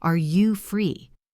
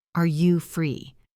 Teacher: Listen to the rise at the end.